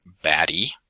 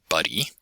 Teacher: my dialect anyway as in the middle of the word buddy it's that almost looking like an r thing called a flap